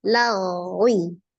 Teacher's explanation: Dibaca dengan cara mengangkat pangkal lidah, karena ghain adalah huruf yang isti'la. tebal ya. Tetapi dilihat dari mengalir atau tidaknya suara, huruf ghain adalah termasuk huruf yang roghah, maka dia alirkan dulu. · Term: tafkhim